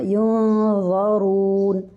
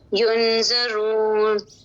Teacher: ज़ा को मोटा कीजिए, हरूफ मुस्तालिया में से है